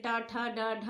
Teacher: ट वर्ग जैसे ट ठ ड ढ अड़ा, ये जो है हमारे मूर्धा से बोले जाते हैं।